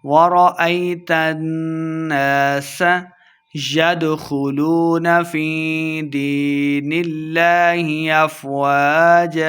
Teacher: ید دال حروف قلقلہ سے ہے، ساکن ہے، اسے خوب واضح کریں گے۔ خو کو ہم نے موٹا پڑھنا ہے۔